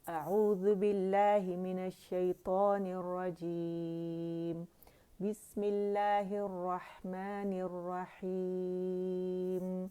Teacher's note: ہم مد عارض للسکون جو ہے وہ 4 کر لیتے ہیں